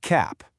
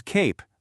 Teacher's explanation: The A makes that short ah sound. But then you add that little magic E to the end and bam, it becomes cape, where the A literally says its name.